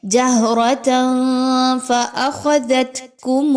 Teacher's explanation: اب اس میں خوا موٹی پڑھی جائے گی، صاد موٹا پڑھا جائے گا، اور قاف، یہ تینوں حروف موٹے ہیں، ان کو پر پڑھا جائے گا۔ · تنوین کے بعد فا کا حرف آ رہا ہے، آپ نے تنوین کی آواز کو چھپانا ہے، کلیئر نہیں پڑھنا، یہاں پر اخفا کا قاعدہ فالو کرنا ہے اور آواز کو تھوڑا سا ناک میں لے کے جائیے۔